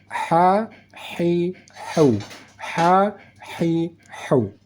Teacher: cara membaca huruf H yang di tengah kerongkongan ada bunyi desis angin yang halus